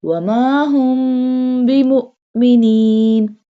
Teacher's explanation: Mim has jazm. Mim sakina. So we do gunna here.